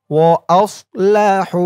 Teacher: হার উচ্চারণটা গলার ভিতর থেকে চিকুন হয়ে বের হবে।